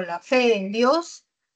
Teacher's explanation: Por ejemplo, si yo digo la fe en Dios, todas mis palabras, mis cuatro palabras tienen una sola sílaba, la, fe, en y Dios. Pero de todas estas, la palabra que suena más y la sílaba que suena más es fe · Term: acento